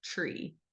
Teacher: as you go from that t sound to the r sound, that r sound, you pass the ch sound. So on the bottom, if you see it goes across where your tongue is moving, you'll end up kind of crossing that going from the T to the R.